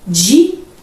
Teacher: Em dia, nós fazemos a separação silábica, vai ficar dia. Por quê? Porque o I é tônico. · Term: hiato